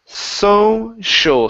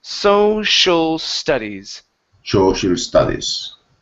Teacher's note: tongue pointing down on the first S, then up for the shul